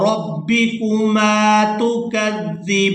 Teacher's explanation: یہاں پر بھی وقف کریں گے تو وقف کی صورت میں نون جو ہے یہ ساکن ہو جائے گا، با کو کھڑی زبر کی وجہ سے کھینچتے ہوئے نون ساکن کے ساتھ ملائیں گے